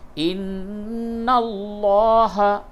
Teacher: عَلَيْهِنَّ سَبِيلًا، سبیلاً ہے وقف کی حالت میں، سبیلا، ان اللہ، لام کو پر کیجئے، نون پہ غنہ کیجئے